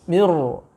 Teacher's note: ro-nya yang seharusnya dibaca tipis kini diubah menjadi dibaca tebal